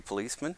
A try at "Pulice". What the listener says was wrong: Yeah, but U instead of an O. Pulice. Pulice in Italian.